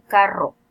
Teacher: si hay varias fases de cierre, el fonema vibrante es múltiple, como en el caso de carro. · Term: vibrante múltiple